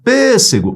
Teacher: Pêssego. Onde é que se prolongou? Na antepenúltima. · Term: proparoxítona